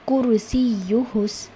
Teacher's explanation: یا کے اوپر تشدید ہے، آپ کو تھوڑا سا یا پر دباؤ ڈال کر پڑھنا ہے۔ کرسیہ السماوات والارض، یہاں پر بھی میں نے روکا ہے، یہاں پر صاد لام یا آ رہا ہے، وقف کا سائن۔